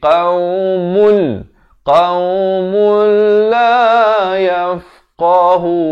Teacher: Tanwin yakni baris 2 ataupun nun mati kalau datang selepasnya huruf lam ataupun huruf ro, hukumnya idgham bila gunnah. Masuk tanpa dengung. Daripada qaumun jadi qaumul.